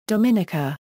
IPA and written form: ˌdɒmɪˈniːkə (Dominica)